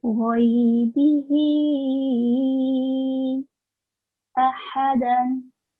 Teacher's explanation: So the big ha, the sound comes from middle of the throat.